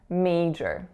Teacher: Two syllables. The winner is the first one, may. And then the trick for major is that that second syllable looks like jor, but it's not major, it's major.